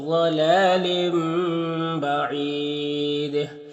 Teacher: تنوین کے بعد با ہے تو تنوین کو اس میم سے بدل کر غنہ اور اخفا کے ساتھ پڑھیں گے، اس کو اقلاب کہتے ہیں۔